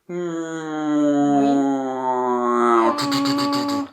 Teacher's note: le voile du palais s'abaisse légèrement, et ça permet de faire passer l’air aussi un petit peu par le nez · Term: le son nasal